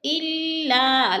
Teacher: الف خالی سے پہلے لام کے اوپر زبر ہے تو الف مدہ کو 2 حرکات کے برابر کھینچ کر پڑھیں گے